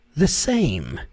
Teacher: Quando você for falar a palavra the, lembre-se que o som não é e, não é the, the same, não é the, the. E o som do th ali na ponta da língua é bem sutil, bem suave.